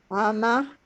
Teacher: Does everybody hear that little breath of air at the end? It's like a breath of fresh air.